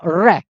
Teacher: यानी जीभ का इसका उच्चारण करते समय जब हमारी जीभ की आगे की चोंच ऊपर जाकर के मुड़ जाएगी तो उस मुड़ने को लुंठित कहेंगे। और जब हम इसको बोलेंगे तो हमारी जो जीभ है वो कांपेगी, जैसे रे रे रे, तो कांपेगी, इसलिए कांपने के कारण इसको प्रकंपित कहते हैं।